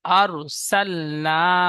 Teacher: মিলিয়ে পড়তে হয় আলিফের ডানদিকে জবার এসেছে একে আলিফ মাদ্দা বলে আলিফ মাদ্দা এক আলিফ পরিমাণ টান দিয়ে পড়তে হয়